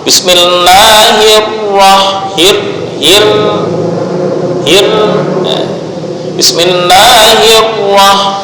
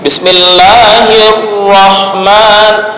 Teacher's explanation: ujung lidah tetap bergetar satu kali saja secara ringan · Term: takrir